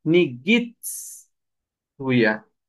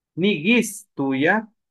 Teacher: Aquí hay una TZ y acordémonos de esto. El sonido de la TZ es como cuando se pincha algo. Y de la S es un ceseo.